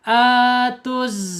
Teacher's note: Alif lam syamsiah ya, alif lam syamsiah karena alif lamnya ada tapi tidak terbaca. Justru dia masuk ke huruf zai.